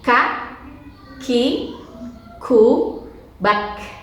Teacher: Hurufnya adalah K. Pengucapannya harus disertai dengan ada angin keluar